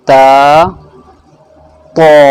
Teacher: دونوں کہاں سے نکلتے ہیں؟ یہ زبان کی نوک اوپر کے جو دو دانت ہوتے ہیں ان کی جڑ میں لگ جاتی ہے